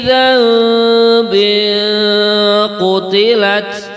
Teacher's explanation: ada tanwin setelahnya qaf, nama bacaannya adalah ikhfa hakiki, itu dibaca mendengung juga